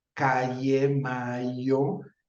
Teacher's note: variante del español de los Estados Unidos y en otras la la y se vuelve una yod